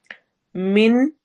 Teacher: من میں نون کی آواز کو واضح پڑھیں گے اور یہاں پہ اظہار ہو رہا ہے